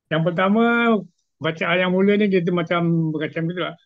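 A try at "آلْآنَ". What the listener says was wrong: Okey, cuma lam tu tak perlu dilambatkan, didelaykan. Sebab dia macam ada sabdu pula. Al tu tak perlu lambat. Lam tu nak kena ringkaskan. Nak kena izharkan.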